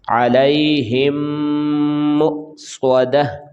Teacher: ہا کو میم کے ساتھ ملائیں گے، غنہ کریں گے، اور میم کو جب حمزہ کے ساتھ ملائیں گے تو یہ واو نہیں پڑھیں گے، بلکہ میم کو حمزہ کے ساتھ ملائیں گے تو یہ جھٹکا لگا کر ہم پڑھیں گے. یہ حمزہ ساکن ہے. ٹھیک ہے، یہ دوبارہ ہم پڑھتے ہیں جی.